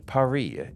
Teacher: French we don't actually say the S out loud even when a word is not plural but ends with an s in French it is still silent a prime example is with their capital of Paris pronounced paria